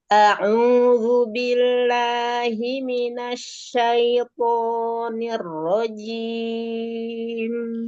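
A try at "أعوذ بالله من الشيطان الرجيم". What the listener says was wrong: Ya, huruf ain domanya monyong lagi. A'udzu Asyaitoni. Toknya keluarkan. Ya, asyaito. Selesaikan linnya. Asyaitonir rajim.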